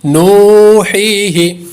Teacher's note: نون واو پیش نو، ہا یا زیر حی، نوحی، ہا زیر ہی، نوحی ہی. پہلے پر واو مدہ ہے، حی پہ یا مدہ ہے، اس لیے دونوں کو لمبا کریں گے